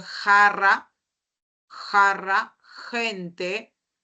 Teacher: el postdorso de la lengua va hacia la zona velar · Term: velares